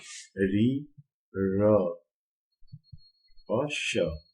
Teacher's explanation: ये जो तीन वर्ण हैं ये भी मूर्धन्य में आते हैं, इनको बोलते समय भी मूर्धा का उपयोग किया जाता है।